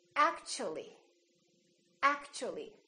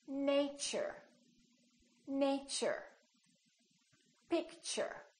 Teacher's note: the T becomes kind of a CH sound so we say actually actually so the T and U create